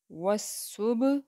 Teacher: Next is واو زبر سواد، وس، سواد پیش با، صب، وصب۔ با جو ہے اس کے اوپر قلقلہ کیا جائے گا